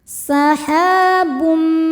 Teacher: ada idgham bil gunnah karena ada tanwin dhammah menghadapi huruf mim. Cara bacanya tanwin dimasukkan ke mim dan dengungkan.